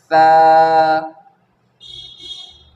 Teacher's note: सनाया उलिया सामने के ऊपर के दो दांत के किनारे में लगने से सा अदा होता है।